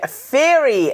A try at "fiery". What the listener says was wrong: Fiery. You said fury. Fiery.